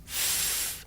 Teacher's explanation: Now, did you notice that I make the sound by sticking my tongue out just a little bit f, and blowing air between my tongue and my top teeth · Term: voiceless consonant